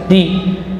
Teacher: Dan dal huruf syiddah dan jahar. Di, ya, ujung lidah diusul thanaya, pangkal gigi seri atas.